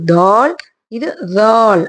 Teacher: நம்மளோட நாக்கு நுனி நாக்கு இருக்குல்லையா அது பல்லுல வெளியில லைட்டா டச் ஆகி வெளியில வரணும்